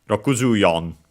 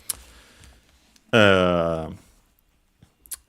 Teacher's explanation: So Rokuju yon would be accented on the yo, Rokuju yon.